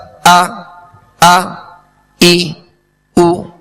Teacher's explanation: حمزہ میں ویسے بھی اس میں سختی ہے، جھٹکا ہے، اور اس کو ضغطہ کے ساتھ یعنی جھٹکے کے ساتھ ادا کیا جاتا ہے. جیسے حمزہ زبر آ، ای، او، ویسے اس میں سختی ہے، جھٹکا ہے.